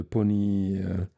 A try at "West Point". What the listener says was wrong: Point, oui. Mais non, t'as dit Pony.